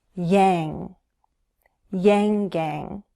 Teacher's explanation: we use the back of our tongue. The back rises toward the roof of the mouth.